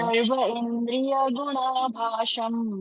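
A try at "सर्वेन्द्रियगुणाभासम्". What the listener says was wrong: उसको उसको तोड़ो मत। सर्वेंद्रिय गुणाभासम।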